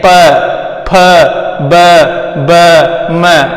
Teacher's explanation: प का उच्चारण करोगे तो आपको पता चल जाएगी प का उच्चारण स्थान कहाँ से होता है। जैसे ही प का बोलते हैं तो अपने दोनों होठ है वो आपस में क्या हो जाते हैं, चिप जाते हैं। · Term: ओष्ठ